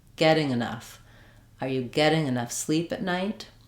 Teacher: getting has two syllables where the first syllable is the stressed one. The ing doesn't matter.